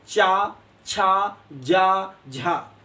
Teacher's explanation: आपकी तालू में जीभ चिपक जाती है, वहां पर चावर्ग होता है। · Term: तालब